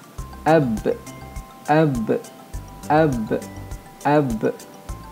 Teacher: menzahirkan lantunan bunyi ketika menyebut huruf qalqalah yang bertanda sukun